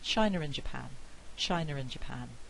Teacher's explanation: stop but also i can have an intrusive r in there no r in the spelling but i've put it in